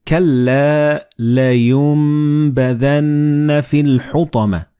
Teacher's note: the noon and ba, they will be assimilated together and you will pronounce them as meme.